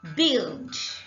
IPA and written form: bɪld (billed)